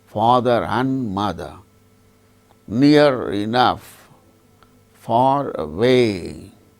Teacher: the word ending R is pronounced when it is followed by a word which begins with a vowel sound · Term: linking